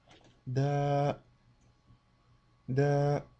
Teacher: comme vous le constatez, la durée est deux fois plus longue qu'une voyelle bref. Donc ici c'est une voyelle longue.